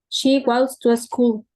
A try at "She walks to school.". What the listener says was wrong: In this case, remember the pronunciation. We don't pronounce the L. L in the pronunciation, no. We say walk. So she walks. Walks. Don't pronounce the L.